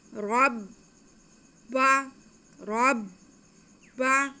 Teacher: आगे बा मुशद्दद है तो रा को हम बा के साथ मिलाएंगे।